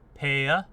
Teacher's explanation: in the stereotypical plantation accent, the R is going to open outward. So if you take a word like pear in Scarlet speech, plantation talk is going to go pear and open out, pear, almost like you're casting it out. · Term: rhoticity